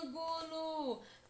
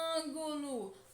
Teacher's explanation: Percebam que a sílaba que mais demora a ser pronunciada é an. Ângulo. Portanto, an é a sílaba tônica.